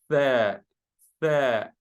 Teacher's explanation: My tongue touches the upper teeth to produce the Tha sound. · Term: tongue letters